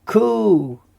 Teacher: we can see that the U is a longer U sound. So it's kubutz, ku.